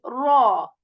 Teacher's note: not going to shape your lips in a round position rather you are going to raise the back part of the tongue to make it sound heavy